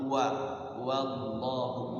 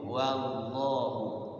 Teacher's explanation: Tapi wallahu, Allah tafkhim ya. Sebelum lafaz Allah itu a sama u maka wajib dibaca tafkhim. Wallahu ala la mad tabi'i atau mad asli.